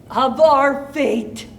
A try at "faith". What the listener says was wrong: The one thing is when you say it's faith, not fate. Again, two very different things.